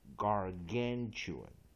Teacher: secondary stress on first syllable, main stress on second syllable